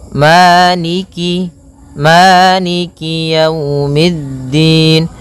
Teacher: kasrahnya juga disempurnakan. Jangan sampai dibaca dengan e tapi dia i